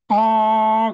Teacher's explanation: 발음하는 동안에 입술 모양이나 혀의 위치가 달라지지 않는 거예요. 아 그러면 그대로 있어. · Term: 단순 모음